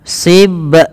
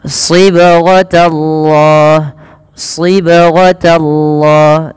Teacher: Baik, kita perhatikan pada lafal sibghatallahi wa man ahsan. pada lafal huruf ba yang dia sukun ini perlu dipantulkan dalam melafalkannya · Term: qalqalah